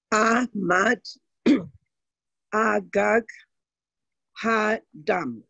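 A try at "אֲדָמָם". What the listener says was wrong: Beautiful. To point out, you said it beautifully.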